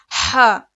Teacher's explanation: ह इसके टू counts हैं। देखिए हलक के बीच के हिस्से से ह अदा होता है। इसको अदा करते वक्त मुंह से हवा बाहर की तरफ आती है। जी देखिए यहां पर हमारे हलक के तीन हिस्से हैं।